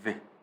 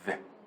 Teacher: 네, 이렇게 있으면 이게 앞니잖아요. 네, 이 앞니에 혀가 닿아요. 이렇게. 그리고 혀가 절대 입천장에는 닿지 않습니다. 절대 닿지 않아요. 요거 요런 상태라고 보시면 돼요. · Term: 번데기 발음